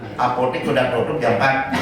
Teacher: Itu Bali sama Lombok kalau ngomong T-nya tebal bu.